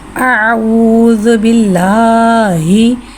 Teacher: और इस बात का ख़ास ख्याल रखिएगा कि अल्लाह अज़्ज़ा वजल के लाम से पहले ज़ेर है, इसलिए यहाँ अल्लाह अज़्ज़ा वजल के लाम को बारीक पढ़ेंगे। आऊज़ु बिल्लाही।